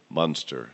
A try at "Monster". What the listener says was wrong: saying that word wrong. You're saying it like the Munsters, the 50s show.